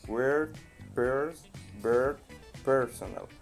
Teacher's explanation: Siempre en la escritura, cuando veamos la E con R, I con R, U con R y O con R. Todos se van a pronunciar como si fuera una O, pero en posición rótica, es decir, hacia el medio.